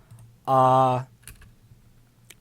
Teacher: this ah sound has a formant around 1100 and another formant around 800